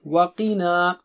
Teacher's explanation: قی پھر موٹا اونچا ہے، پھر نا باریک ہے